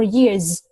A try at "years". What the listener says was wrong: Yeah, we got a Z sound instead of S sound. Okay, Z sound. Years.